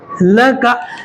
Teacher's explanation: لام کے اوپر زبر, کاف کے اوپر زبر, دونوں کو جلدی پڑھیں گے, کھینچیں گے بالکل نہیں